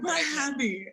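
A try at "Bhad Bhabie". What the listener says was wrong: I think the H's are silent. I think it's Bad Baby.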